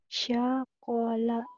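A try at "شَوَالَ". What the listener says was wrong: Sya. Syawala. Ini kan? Kedengar sama saya sakola. Syawala.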